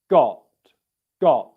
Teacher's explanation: it's a very soft tee you can even have no airflow come out · the tip of your tongue is touching the alveolar ridge right behind your teeth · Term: t sound